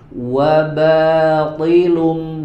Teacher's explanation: huruf ba-nya juga dibaca tipis, ya, karena memiliki sifat istifal, ya, lawan daripada isti'ala.